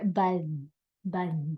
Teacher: behind the teeth you would hear buzz buz like that um so the tongue would stick out a little bit uh so that's a frontal lisp